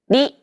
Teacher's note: think of the quick tapping motion your tongue makes as it strikes the top gum Ridge